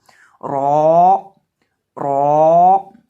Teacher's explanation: रौ को हम पुर करके पढ़ेंगे, मोटा करके पढ़ेंगे, क्योंकि ये हरूफ मुस्तालिया में से है, यानी बसा औकात इसको मोटा पढ़ा जाता है और बसा औकात इसको बारीक पढ़ा जाता है।